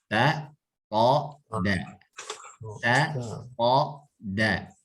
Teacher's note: Pangkal gigi seri atas, pangkalnya, ya, atau pertumbuhan gigi seri atas. Ini ujung lidah menempel pada pangkal gigi seri atas.